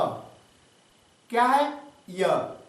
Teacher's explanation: तो य का उच्चारण स्थान होता है तालु।